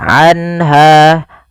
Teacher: suara nunnya dijelaskan suara nun sukunnya, anha, dan tidak boleh ditahan, anha. Kemudian pada lafal ha ada mad tabi'i yaitu fathah bertemu dengan alif. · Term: izhar halqi